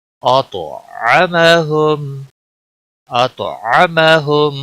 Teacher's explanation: طا کو موٹا بھی پڑھیں گے اور طا کے اوپر قلقلہ بھی ہوگا کیونکہ حروف قلقلہ میں سے ہے طا۔